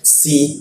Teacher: Kha lalu masuk ke si ya, gigi bertemu gigi ya, sehingga rongga udara terbuka lebar dan hembusan udaranya cukup kencang.